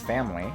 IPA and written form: fæmli (family)